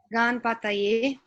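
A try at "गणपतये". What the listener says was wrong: Not Ganpataye. Ga. What is the next letter? Not Ga. It's Ganapataye. Yes. We cannot cut the vowel. Ganapataye. Ganapataye. slowly read letter by letter.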